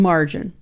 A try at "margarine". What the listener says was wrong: You said margin at first.